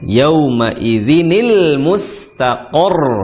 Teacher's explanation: Dikti kasrah jadi nil seperti itu yaumaidzi nil seperti itu nil huruf nunnya tadi yang sukun diharakati kasrah jadi bertemu alif lam jadi nil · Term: hukum iltiq sakinain